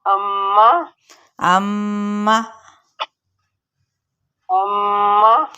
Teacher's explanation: اب یہ غنہ والا ہے، ٹھیک ہے، میم پہ اور نون پہ باقاعدہ طور پر غنہ کیا جائے گا